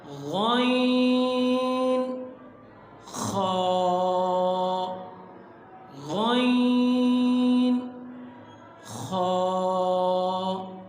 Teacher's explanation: یہ حلق کے اوپر والے حصے سے ادا ہوتے ہیں۔ یعنی جہاں سے حلق شروع ہو رہا ہے عین بالکل اسی جگہ سے یہ ادا ہوتے ہیں۔ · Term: حروف حلقی